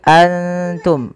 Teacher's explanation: Cara membacanya, samarkan nunnya kepada makhraj daripada huruf ta. Kalau makhrajnya misalkan ta itu makhrajnya adalah perbatasan ujung sari kita, ujung lidah kita menempelkan dengan di atas itu gusi atas dan gigi sari atasnya, ya, di perbatasannya, di ujung pangkalnya. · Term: ikhfa